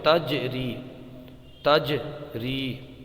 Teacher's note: جیم ساکن ہے، یہاں پر قلقلہ ہوگا، آواز پلٹ کے آئے گی۔ یہ دیکھیے جیم ساکن ہے، تجری، تجری۔